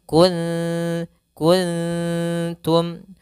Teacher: hati-hati dalam melfal ikhfanya jangan sampai ikhfa tebal kuntum kuntum tidak karena di sini huruf ta huruf yang tipis maka ikhfanya pun tipis